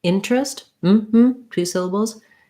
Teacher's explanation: We don't say this E sound in interest